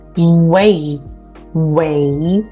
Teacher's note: W 사운드 앞으로 입술 당겨 주시고요 a 사운드가 소리에 바로 연결돼야 되겠죠